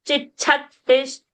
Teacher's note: while saying Chakti, that Ti should remain short. Because you are expelling more prana, it doesn't mean you have to go overboard, overspeed.